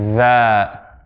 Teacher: for the dhal, there's vibration going on in the vocal cords